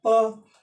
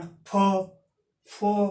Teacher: अघोष का अल्प प्राण धीरे से साउंड निकल रहा है प, और तेज साउंड निकलेगा अघोष का महाप्राण फ